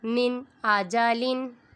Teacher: نون ساکن کے بعد حمزہ آ رہا ہے، ادھر اظہار ہوگا، یہاں پر ہم غنہ نہیں کریں گے